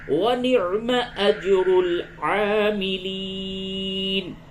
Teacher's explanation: جیم ساکن ہے، یہاں پہ آپ کو قلقلہ کرنا ہے